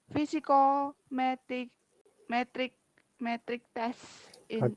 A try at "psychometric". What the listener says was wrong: psychometric, not physical. Psycho. Remember psychology? test called psychometric. It comes the root word psycho. So psycho is related to your mind or mentality.